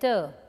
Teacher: alveolar, tip of the tongue and alveolar ridge